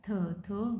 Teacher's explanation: थ वॉइसलेस है क्योंकि कोई इसमें वाइब्रेशन नहीं है। डेंटल है, टीथ का यूज़ कर रहे हैं।